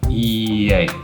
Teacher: So it becomes E-A. So we can actually transition smoothly from E to A by adding the y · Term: y sound